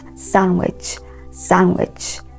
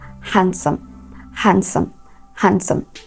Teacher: Now, these words are not pronounced sandwich or handsome. The D sound or the letter D in these words are, you guessed right, silent. Okay, so they are correctly pronounced sandwich, sandwich.